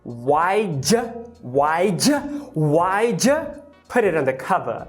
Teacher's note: Você vai reduzir o did para um d e vai palatalizar esse d.